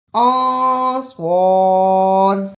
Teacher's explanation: للظالمین انصار، صاد کو موٹا پڑھنا ہے